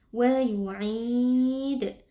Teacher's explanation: yang kita sukunkan adalah huruf Dal berlaku hukum Qalqalah Kubro sehingga huruf dalnya kita beri pantulan suara